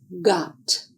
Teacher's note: air is blocked by the back of the tongue against the roof of the mouth. No explosion of air is made, but air and voice are used to make the sound. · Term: the hard sound